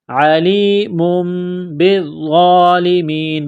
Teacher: تنوین کے بعد با ہے تو یہاں پر غنہ کریں گے، آواز ناک میں چھپائیں گے